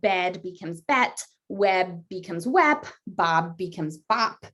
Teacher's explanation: d becomes t and b becomes p, but again only at the end of words